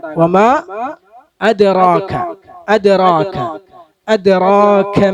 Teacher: വമാ അതുപോലെ അദ് അല്ലെ, ദാലിന് സുക്കൂന് വന്നു, ദാല് കൽക്കലത്തിന്റെ അക്ഷരാണ്. അപ്പൊ അദ്റാക എന്ന് ഓതരുത്, അദ്റാകല്ല. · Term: കൽക്കല മുഴക്കമുണ്ടാകണം